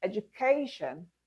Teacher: in the word education, the stressed syllable is the third syllable or the second to the last syllable